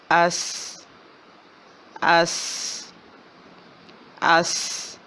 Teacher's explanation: سیٹی کی آواز ہے، سیدھی آواز ہے اور باریک ہے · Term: سین